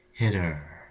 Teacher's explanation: in hitter there's a constant stream of air leaving your lungs the entire time